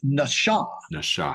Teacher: it's a sh sound it's not an S sounds